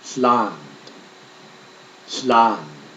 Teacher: L is similar to the English L, but the tongue is more curled and the breath is forced around the back of the tongue.